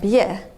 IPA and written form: bje (bě)